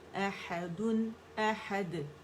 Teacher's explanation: دال پہ قلقلہ کریں گے باریک والا